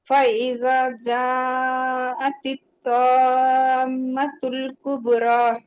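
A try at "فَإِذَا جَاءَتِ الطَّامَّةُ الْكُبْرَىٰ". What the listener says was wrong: कलकला नहीं किया आपने, तो को आपने वक्त नहीं दिया आपने, मीम पे मीम।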